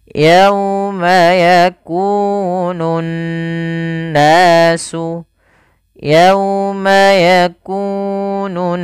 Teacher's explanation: cara membacanya adalah menahan suara n ya sepanjang dua harakat · alif lam yang kita tuliskan tapi kita tidak baca huruf lamnya. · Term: bacaan gunah, alif lam syamsiyah, gunnah